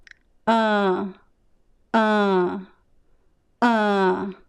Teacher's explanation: the air goes through both mouths and nose and you feel a vibration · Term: nasal sound